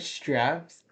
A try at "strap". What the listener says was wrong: It sounds maybe a bit like straps, but it's strap.